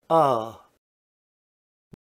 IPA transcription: ʌ